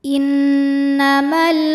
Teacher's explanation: ada alif lam yang menghadapi huruf qamariah yaitu huruf k maka lam sukun dibaca dengan jelas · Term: alif lam qamariah